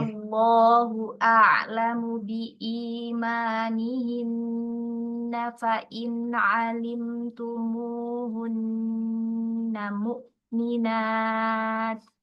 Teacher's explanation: Hamzahnya jangan naik, jangan tebal.